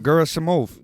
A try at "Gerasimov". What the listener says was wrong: Yeah, it's not Jera. It's Gera.